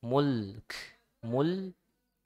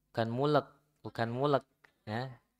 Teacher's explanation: Tapi lamnya sukunkan mul ya, mul.